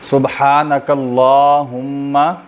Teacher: لام کی چونکہ کھڑی زبر ہے اس کو لمبا کریں گے الف کے برابر